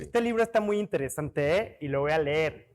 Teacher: Si fueras fresita, terminas hacia arriba